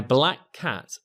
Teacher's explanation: that common C Sound is only sounded out once